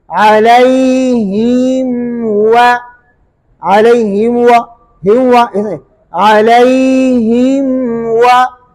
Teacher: इस मीम के अंदर गुन्ना आनी करेंगे, आगे फिर वाव में होंठ गोल करेंगे। अलैहिम हुआ, अलैहिम हुआ, हिम हुआ, अलैहिम हुआ, थोड़ा सा गुन्ना हुआ, आगे वाव में होंठ गोल कर दिया।